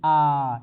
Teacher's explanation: ठीक है, और विव्रत स्वर क्या होते हैं कि जिस स्वर के उच्चारण में मुंह सबसे अधिक खुलता है, जैसे आ, ये विव्रत हो गया। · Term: विवृत स्वर